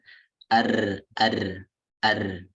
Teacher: Jadi ketika tidak ada celah ini nanti jadinya salah ya. Jadinya kayak terlalu ada tikror atau pengulangan dalam huruf ro. Getaran ro itu terlalu berlebihan. Jadi nanti jadinya ar.